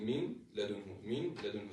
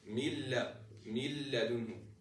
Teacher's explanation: since this is idgham without ghunnah, I'm not supposed to hear any sound in this specific part when reading the lam